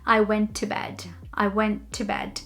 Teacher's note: Usually you would link went and to and only say one T.